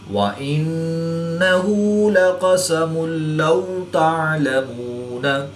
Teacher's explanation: 2 پیش کی تنوین کے بعد لام حروف یرملون میں سے ہے تو یہاں پر ادغام بلا غنہ ہوگا، یعنی کہ بغیر غنہ کے ادغام کر کے پڑھیں گے